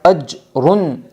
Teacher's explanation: قلقلہ کی آواز ٹکر کھا کر الگ ہو جاتی ہے